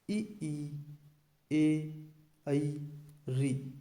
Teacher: अग्र स्वर का उच्चारण करते समय हमारी जिह्वा का अगला भाग सक्रिय रहता है, इसलिए इन्हें अग्र स्वर कहा जाता है।